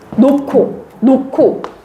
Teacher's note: 히읗이랑 기역 만나면 키읔이 되는구나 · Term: 축약